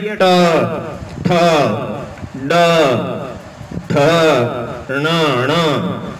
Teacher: तो ये ट वर्ग आपके मूर्धा से हो गया